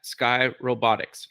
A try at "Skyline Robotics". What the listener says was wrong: But it's Skyline Robotics. Just Sky.